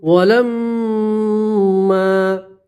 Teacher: میم کے اوپر تشدید غنہ کریں گے